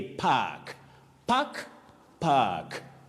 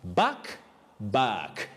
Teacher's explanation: we have it as the long low front sound ah you drag it a bit